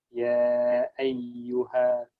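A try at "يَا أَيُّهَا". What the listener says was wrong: Masya Allah. Udah betul.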